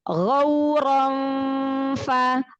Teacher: Nah, cara mengucapkan fa ini dia memang khas. Makhraj kita sudah nempel ke huruf fa lisannya, tapi jangan nempel banget. Jadi masih ada jarak, tapi udah mempersiapkan huruf fa.